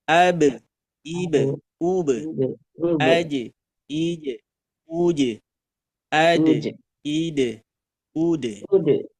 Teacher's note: Elko, ilko, uko, alko, ilko, ulko. Sedangkan ba, jim, dan dal itu pantulan qalqalahnya ke bunyi e.